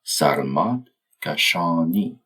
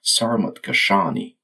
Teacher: I'll be using the Persian pronunciation with the stress on the final syllables of each word.